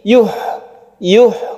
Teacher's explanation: Sukun ha itu kita harus lepas dan suaranya harus jernih.